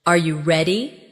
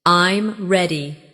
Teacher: your voice often goes up at the end of a question, Are you ready? and goes down at the end of a statement